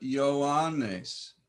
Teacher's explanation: iota tends to be pronounced as a y sound in front of another vowel. These are two sounds.